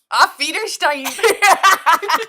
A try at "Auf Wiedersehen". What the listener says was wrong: That was not correct. It's Auf Wiedersehen. It's Auf Wiedersehen. It's not Stein. You're saying Auf Wiederstein. It's not all those R's. It's Auf Wiedersehen. You're saying Auf Wiedersehen with an Australian accent. Art Wiedersehen.